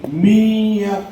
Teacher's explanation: دیکھو یہ من کے بعد مشق بالحروف، من کے بعد ادغام کے 6 حرف میں سے میں یا لاؤں، ادغام کے 6 حرف میں سے میں یا لاتا ہوں، اس پر تشدید ہے. تشدید والے حرف سے پہلے ساکن حرف پڑھا نہیں جاتا، اس لیے نون کو پڑھیں گے نہیں بلکہ میم کو یا سے ملا کر پڑھیں گے